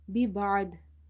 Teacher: Ain from the middle of the throat, and dad is heavy as well.